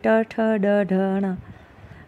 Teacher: आपकी जीभ जहाँ पर स्पर्श की उस पार्ट को बोलते हैं मुर्दा, उस ऑर्गन को बोलते हैं मुर्दा, और इन व्यंजनों को हम बोलते हैं मूर्धन्य।